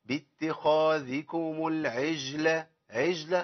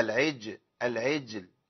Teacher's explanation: الجيم عندي هنا ساكنه مقلقله، والجيم فيها شده وجهر، انقطاع صوت وانقطاع نفس